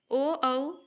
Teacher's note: ठीक है, ओ, औ कंठोष्ठ्य ये सही है। कंठ और ओष्ठ मिलाकर ओ, औ बोला जाता है, इसीलिए कंठोष्ठ्य